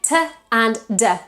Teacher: The tip of our tongue can't touch the teeth. They are alveolar, so they touch the part behind the teeth, which is called the alveolar ridge.